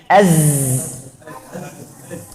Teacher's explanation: Karena dua pita suara itu terlalu dekat. Waktu nafasnya keluar, buat gataran. Seperti kita punya balon, isi anginnya. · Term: jahar